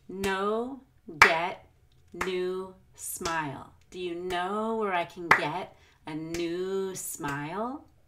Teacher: notice how I really prolong the vowel and new and you need to do that we want to stretch out the vowels in our stressed words